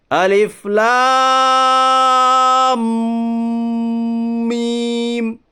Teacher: مد لازم حرف مستقل کو 5 الف کے برابر کھینچ کر پڑھیے